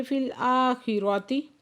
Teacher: حمزہ پہ کھڑا زبر ہے دو حرکت کھینچ کے پڑھیں گے،